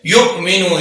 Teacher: युमिनून, युमिनून, युमिनून, हमजा को ही झटके से जाहिर करेंगे लेकिन क्योंकि हमजा साकिन है तो या को साथ मिलाते हुए झटका पैदा करेंगे। युमिनून, युमिनून नहीं पढ़ेंगे, युमिनून।